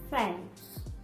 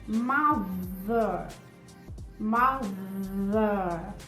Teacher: o TH é voiced. Ele tem som. Eu vou usar as cordas vocais. Elas vão vibrar